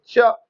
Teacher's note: च, front of the tongue जो होता है अपर मोलार में जाके धक्का मारता है और हवा दोनों तरफ से निकलती है